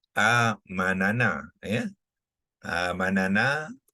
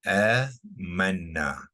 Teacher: So kita sukunkan nun. So berlakulah pertemuan dua nun. Satu nun yang sukun dan satu nun yang berbaris, ya. So dia melibatkan hukum idgham, ya, mutamasilain.